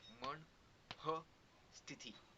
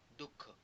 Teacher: उच्चारताना त्यात नकळत एक ह चा स्वर येतो आणि त्यालाच म्हणतात विसर्ग